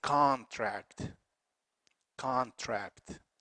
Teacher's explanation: schwa and the stress is on the second syllable contract but if it is a noun is a contract contract the first syllable is stressed